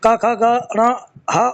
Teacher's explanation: आ क वर्ग क ख ग ण ह और विसर्ग का उच्चारण स्थान कंठ है